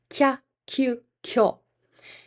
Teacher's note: Glides are when we merge an E sound, an E ending hiragana, with a ya, you, or yo, and they become one sound.